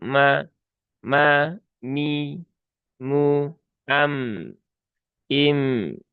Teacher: Mim juga hurufnya tipis ya. Maka pastikan dibaca dengan ma bukan me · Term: huruf mim